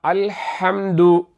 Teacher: இந்த ஹ எங்கிருந்து வருகிறது என்றால் தொண்டையின் நடுப்பகுதியில் மின் வசத்தில் ஹல்க, தொண்டையின் நடுப்பகுதியில் உண்டாகும் ஹ.